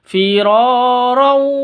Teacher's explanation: Cara bacanya didengungkan karena idgham bi gunnah. Idgham bi gunnah itu masuk dengan dengung, masuk ke wawu terus ditambah dengan dengung, diiringi dengan dengung.